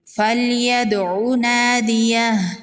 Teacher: دال حروف قلقلہ میں سے ہے، دال ساکن پر قلقلہ ہوگا، الف مدہ ہے، ایک الف کے برابر کھینچ کے پڑھیں گے، وقف کی صورت میں ہا کو ساکن کر دیں گے۔